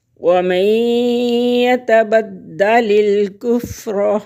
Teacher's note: نون ساکن کے بعد یا حروف یرملون میں سے آ گیا تو یہاں پر ادغام کریں گے غنّے کے ساتھ۔